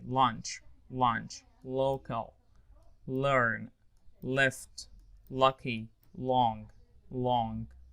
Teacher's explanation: So L at the beginning, clear L